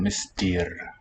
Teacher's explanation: that word Mr. is pronounced with a long E in the second syllable